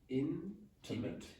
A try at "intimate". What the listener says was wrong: Yeah, you keep pronouncing the vowels in English like French vowels.